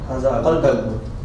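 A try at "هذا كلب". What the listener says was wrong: Okay, not qalbun, it's kalbun. There is a huge difference between the two. If you say qalbun, it's heart and not the dog.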